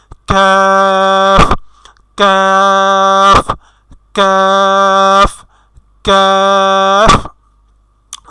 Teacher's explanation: অনেকে আমরা কাফ বলি, কাফ না, আমাদের কাফ হবে। একটু বাতাস ছেড়ে দিয়ে, শুরুতে একটু বাতাস ছেড়ে দিয়ে উচ্চারণ করতে হবে।